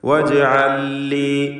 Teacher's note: ജീമിൻ്റെ സുക്കൂൻ ഖൽഖല സുഗ്റ നൽകി ശബ്ദം ഹറക്കത്ത് പോലെ ചലിപ്പിക്കുക.